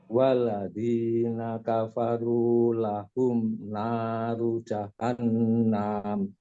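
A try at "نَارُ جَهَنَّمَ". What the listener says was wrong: Ingat, nggak ada alif di situ. Nah, ru-nya langsung saja.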